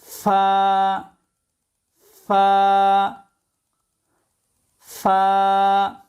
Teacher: নিচের ঠোঁটের পেটকে কামড়ে ধরে ফা উচ্চারিত হবে